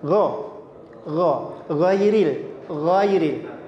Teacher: Gho tidak sampai bergetar gho. Cukup gho saja, enggak usah sampai bergetar. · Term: huruf ghain